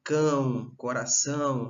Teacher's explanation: quando o som ele sai, se configura mais pelo aspecto nasal do que oral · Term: vogal nasal